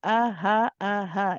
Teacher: this is from the bottom of the throat where we say ah from the same place where the Hamza comes from ahaa is this ha it's no squeezing in that no squeezing